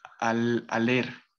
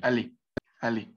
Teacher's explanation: este verbo ale, pues bueno, no va a sonar la R